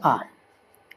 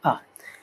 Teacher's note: तो आ होता है विवृत स्वर, यानी जिनमें स्वरों के उच्चारण में मुख क्या होता है, पूरा खुल जाता है।